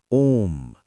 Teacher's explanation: प्लुत स्वर prolonged vowels इनके उच्चारण में सबसे अधिक समय लगता है। जैसे हम मंत्रों में बोलते हैं ओम।